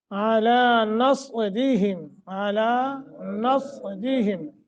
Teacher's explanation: صاد موٹا را باریک ہے،